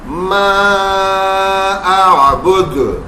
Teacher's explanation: ساکن حرف تو تھا, حروف مدہ نہیں تھا, اس لیے یہاں پہ نہیں کھنچا